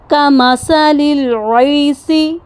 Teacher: سا پر زبان کی نوک کو ہم نے سامنے والے جو اوپر جو دانت ہیں ان کے کناروں کے ساتھ لگانا ہے۔ اس مخرج سے ہوا بغیر رکے نرمی اور سرسراہٹ کے ساتھ باہر نکلتی ہے، جو حمز کی صفت کو واضح کرتی ہے۔